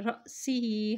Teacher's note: औ बिही अज़म मिन रअसिही, را کے زبر کو حمزہ کے ساتھ ملائیں گے کیونکہ اس کے اوپر جزم ہے. جب بھی حمزہ ساکن ہو جاتا ہے تو وہاں پہ جھٹکا دے کے ادا کیا جاتا ہے